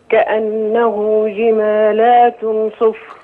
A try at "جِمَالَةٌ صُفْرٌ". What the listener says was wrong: كأنه جمالة صفر. مفيش ألف بعد اللام. لا جمالة لتن.